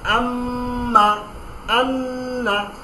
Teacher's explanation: গুন্না হচ্ছে আপনার নাকের মাধ্যমে একটি ধ্বনি তৈরি হবে, একটা সাউন্ড তৈরি হবে নাকের ভেতর থেকে, এবং এটাকে দ্বিগুণ টানতে হবে। আম্মা, অর্থাৎ নর্মালি মিমের যে উচ্চারণ সেটাকে ডবল করে দিতে হবে